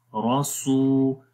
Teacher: میں آپ کو رولز بھی بتا رہا ہوں ساتھ میں، جب بھی واو کے اوپر جزم آئے اور اس سے پہلے پیش ہو تو وہاں پر 1 الف کے برابر لمبا کرتے ہیں، تو یہاں پر بھی لمبا کریں گے. روس، را کو موٹا پڑھیں گے، سین کو لمبا کریں گے، روسو. اور سین کو لمبا واو کی وجہ سے کریں گے کیونکہ یہاں پر واو مدہ ہے، مدہ کا مطلب ہوتا ہے لمبا کرنا، تو 1 الف کے برابر لمبا کریں گے، روسو.